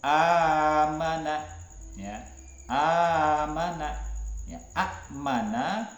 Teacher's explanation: itu namanya Mad Arid lisukun yang nomor empat mad badal itu Mad yang menggantikan Hamzah menurut Rawi hafaz itu dibaca satu Alif